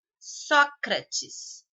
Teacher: a sílaba só é a de maior intensidade. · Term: sílaba tônica